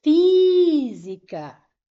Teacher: a antepenúltima é a mais forte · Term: proparoxítona